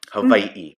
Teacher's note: then that little backwards apostrophe which is called an okina and the w is pronounced like a v